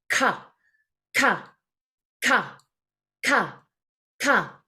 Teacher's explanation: Now the K sound, back of tongue.